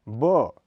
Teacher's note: यह अल्पप्राण घोष ध्वनि है इसका उच्चारण स्थल भी होठ है इसका उच्चारण प की तुलना में कुछ ठहरा हुआ माना जाता है साथ ही इसका के उच्चारण में स्फोट भी कुछ कम होता